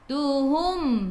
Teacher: Mim ada sukun, jelaskan mim. Tutup mulut bila berhenti.